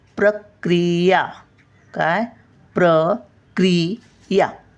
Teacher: क्री बघा, पटकन बोलतो आपण, पहिली वेलांटी आहे